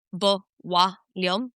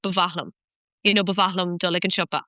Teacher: MH is a bilabial continuant, which has lost its nasal component. So it's not nasal anymore like an M is.